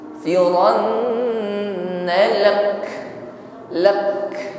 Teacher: La astaghfiranna lak, firan nun tasydid dengungkan terlebih dahulu, firanna lak, karena kita waqaf maka kaf kita tampakkan sifatnya saja ya, tampakkan sifat hamsnya, ada nafas yang berhembus.